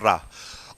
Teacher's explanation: जब जीभ लुढ़क कर स्पर्श करे यानी लुंठित कहते हैं, तो उसको कहते हैं रा।